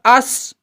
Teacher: सीन के पढ़ने में जुबान की नोक नाया सुफला के किनारे से लगने के साथ-साथ कुछ नाया उलिया के किनारे से भी लगी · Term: सीन का मखर